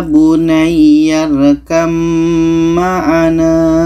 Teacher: ba ini tidak kita baca lagi kita baca ya bunyarkam maana Ba ini kita tidak baca lagi karena terus masuk ke mim